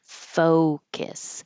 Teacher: Focus. It's most important in this word to have a good O. And since it's the stressed syllable, it's going to be longer.